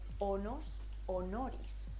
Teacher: la S que está entre dos vocales pasa a ser una R. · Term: S intervocálicas